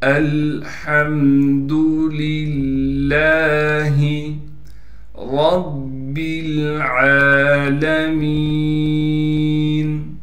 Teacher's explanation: یہاں پر دو لام ہیں، دونوں لاموں کو صاف کر کے نکالنا ہے۔ دوسرے لام پر تشدید ہے، تھوڑا ٹھہراؤ رکھیں گے، تشدید پر کڑا زبر ہونے کی وجہ سے لام کو ایک الف کی مقدار کھینچیں گے۔